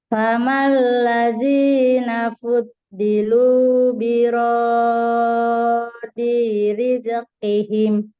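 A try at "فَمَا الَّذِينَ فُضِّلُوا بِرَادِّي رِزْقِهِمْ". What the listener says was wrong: Kurang tasdid Bu. Kurang naber. nabernya. Iya, kurang. kepanjangan. Nah, huruf zai juga sama. Rizqi. Rizqi. Dua kali ya.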